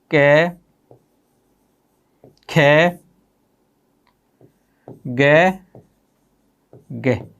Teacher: ये प्रथम चार वर्णों का उच्चारण किसके माध्यम से किया जाता है, कंठ के माध्यम से किया जाता है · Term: कै वर्ग